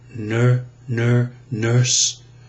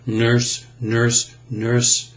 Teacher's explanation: Isn't that interesting? So with the lips slightly rounded and pursed forward, and either the tongue tip curled back, nurse, or center of the tongue bunched, nurse, nurse, nurse, you have that impression of our coloration, rhoticity, as we call it.